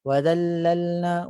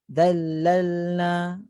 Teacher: Kalau yang kurang tepat dallalna, bunyi juga lam, tapi dia tidak diangkat dengan sempurna, tidak bersentuhan dengan langit atas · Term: lam yang kurang sempurna